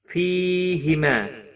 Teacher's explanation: فی یا مدہ ہے ایک الف کے برابر کھینچ کر پڑھیں گے